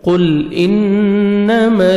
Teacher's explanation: قل، قاف کو موٹا کر کے پڑھیں گے، لام کو اپنے ہلانا نہیں ہے، قل انما، نون مشدد غنہ کریں گے، نوز میں ساؤنڈ لے کے جائیں گے، جب میم کو مرشد اور نون کو مرشد ہوتی ہے تو غنہ کرتے ہیں، نوز میں ساؤنڈ لے کے جاتے ہیں۔